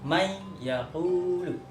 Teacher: Idgham itu adalah memasukkan atau membaca di huruf selanjutnya gitu. Jadi nun mati atau nun sukunnya atau tanwinnya itu tidak terbaca, tapi kita membaca huruf selanjutnya